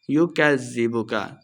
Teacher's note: فَمَا يُكَذِّبُكَ بَعْدُ بِالدِّينِ، یُکَذِّبُکَ، کاف کو زال کے ساتھ ملا کے پڑھیں گے، لمبا نہیں کرنا۔ یُکَذِّبُکَ بَعْدُ بِالدِّينِ، وقف کرنا ہے، دین، یا مدہ ہے، 2 حرکات لمبا بھی کریں گے۔